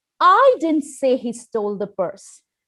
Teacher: let me start by changing my intonation and stress on the first word, I.